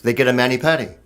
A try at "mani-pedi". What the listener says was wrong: No, it's mani-pedi. Why would it be patty when the word is pedicure? P-E-D-I.